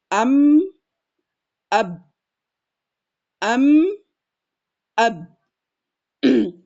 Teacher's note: huruf mim dan ba itu bertemu dua bibir.